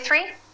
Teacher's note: three can you say three the th is unvoiced